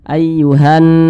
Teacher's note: huruf nunnya ini didingungkan atau ditekan